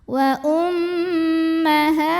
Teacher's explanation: Cara bacanya dengung, bunyi M-nya tahan kurang lebih 2 harokat. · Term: gunnah musyaddadah